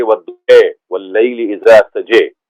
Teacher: امالہ کا کیا مطلب ہے کہ آپ ایسے پڑھتے ہیں جس میں زبر جو ہے it is aligned to words of زیر. تو والضحیٰ کو پڑھیں گے والضحیٰ واللیل اذا سجے.